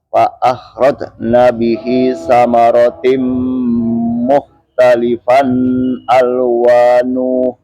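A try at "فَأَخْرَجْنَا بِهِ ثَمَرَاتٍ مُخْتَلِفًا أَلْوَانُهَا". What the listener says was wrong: Ada ha tuh, baliknya ada alif ya. Alwanuha, haknya tuh dua harokat ya. Hanya dua harokat. Alwanuha.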